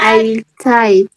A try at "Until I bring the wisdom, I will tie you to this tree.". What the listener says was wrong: Tie what? No, listen. After tie, there is one sound that you missed. Listen again.